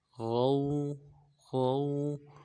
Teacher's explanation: ألا تطغوا، تا کو قو کے ساتھ ملانا ہے، قو کو موٹا ادا کریں گے. تطغوا، غین کو واو کے ساتھ ملانا ہے، واو لین ہے، بغیر کھینچے پڑیں گے